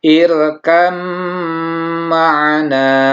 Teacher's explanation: Dan yang kedua, apabila ada ba sukun bertemu mim, maka ini dibacanya selain dari meleburkan ba ke huruf mim, juga harus ditambahkan dengan sifat gunnah. Jadi harus ada suara dengungnya.